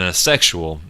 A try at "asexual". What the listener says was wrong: Say it again, because it sounds like you're saying sexual, but Asexual.